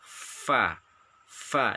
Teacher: Yang pertama bibir bawah, bagian dalam, bertemu ujung gigi atas. Jadi gigi atas kita bertemu dengan bibir bawah bagian dalam. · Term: huruf fa